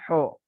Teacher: Ha tapi pakainya huruf o, ho, bukan kho, itu kan ada kotornya ya. Kalau di Madinah ho, bukan kho.